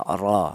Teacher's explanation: Cara menebalkan huruf ro menggunakan lidah bagian belakang diangkat diangkat ke atas ya ro seperti itu. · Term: tafhim, ro tafkhim